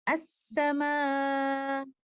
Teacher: letter حمزہ کی کوئی آواز سنائی نہیں دی بلکہ letter Hamza drop آف ہو